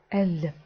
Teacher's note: літера L є середньою між зовсім твердою л та м'якою л